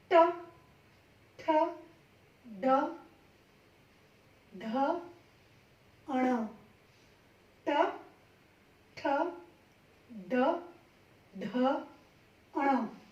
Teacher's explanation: ये मूर्धा से जीभ टकराएगी। मूर्धा, यहाँ पे ये जो आका सख्त सी जगह होती है दांतों के थोड़ी सी ऊपर, वहां पे आपकी जिह्वा टकराएगी। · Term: ट वर्ग